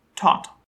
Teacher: your hand up to your mouth and saying the word tot you'll notice a fairly strong puff of air after the first t but not so much after the second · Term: aspiration